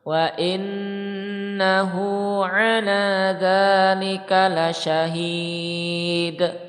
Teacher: ada nun tasdid, maka dia ditekan kemudian disertai gunnah, tekan 2 ketukan ya